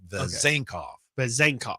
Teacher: the emphasis is on the last two syllables